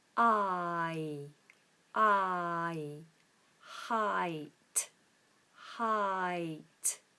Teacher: a diff thong for those of you who don't know is two vowel sounds merged into one sound